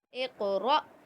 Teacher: रा को ऊपर पढ़ेंगे, क़ाफ़ में क़लक़ला करेंगे